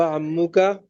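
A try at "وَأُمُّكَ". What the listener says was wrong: अम्मो का, अम्मो का नहीं पढ़ेंगे, अम्मुल चाचा को कहते हैं। उम्मो का।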